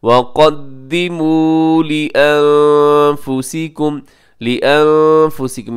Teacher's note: यहाँ नून साकिन के बाद फ़ा है, यहाँ इख्फ़ा कीजिएगा।